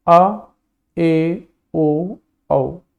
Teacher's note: अर्धविवृत यानी आधा, आधा मुख खुलता है